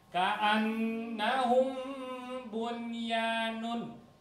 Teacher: Karena ka'annahum bu, maka akan tambahkan dengungnya. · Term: Ikhfa syafawi